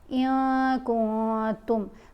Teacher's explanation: नून की आवाज़ को नाक में छुपा कर पढ़ेंगे